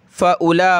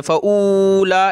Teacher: वाव को नहीं पढ़ेंगे, हमज़ा के बाद डायरेक्ट लाम पढ़ना है। फ़उला पढ़ेंगे, फ़ऊला नहीं पढ़ना।